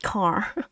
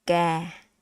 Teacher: It's not car. It's ga. Okay? We don't have the k. We don't have that air sound.